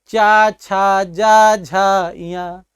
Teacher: आप चवर का उच्चारण करिए, चा छा जा झा इया। आपकी जिह्वा ना ऊपर जा रही है ना नीचे आ रही है, तालु में ही स्पर्श कर रही है, इसी कारण इनका उच्चारण स्थान क्या पड़ गया, तालु हो गया।